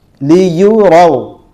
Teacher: را کو ہم بولڈ یعنی پور پڑھیں گے